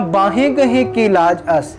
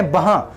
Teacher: ਬਾਹਾਂ ਗਹੇ ਕੀ ਲਾਜ ਅਸ, ਇੱਕ ਗੱਲ ਦਾ ਧਿਆਨ ਰੱਖਣਾ ਗੁਰੂ ਦੀ ਪਿਆਰੀ ਸਾਧ ਸੰਗਤ ਜੀਓ, ਅਸੀਂ ਉਚਾਰਨ ਕਰਦੇ ਹਾਂ ਬਾਹੇ ਗਹੇ ਕੀ ਲਾਜ ਅਸ, ਪਰ ਧਿਆਨ ਦੇਣਾ ਹਾਹੇ ਨੂੰ ਸਿਹਾਰੀ ਹੈ ਤੇ ਕਿਤੇ ਨਾ ਕਿਤੇ ਅਸੀਂ ਹਾਹੇ ਦਾ ਔਂਕੜ ਜਾਂ ਹਾਹੇ ਦੀ ਸਿਹਾਰੀ ਸਾਇਲੈਂਟ ਰੱਖਦੇ ਹਾਂ, ਉਹ ਬੋਲੀ ਨਹੀਂ ਜਾਂਦੀ। ਬਾਹੇ ਦਾ ਕੋਈ ਉਚਾਰਨ ਨਹੀਂ, ਉਚਾਰਨ ਹੈ ਬਾਹਾਂ।